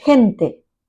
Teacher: the voiceless V fricative sound as in hente that is people it's a sound of a strongly aspirated H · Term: voiceless velar fricative